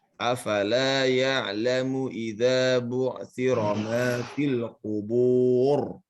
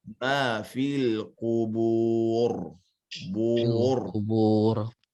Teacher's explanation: Ini pada bacaan ro yang terakhir ujung-ujung dia harus tebal.